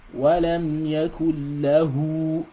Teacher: This waw mad makes the ha elongated for 2 seconds.